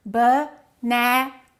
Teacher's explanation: We stress one and we reduce the rest. In this case, banana, the second syllable is stressed, so we would say it like this, banana.